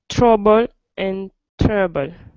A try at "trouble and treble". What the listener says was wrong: Good, good.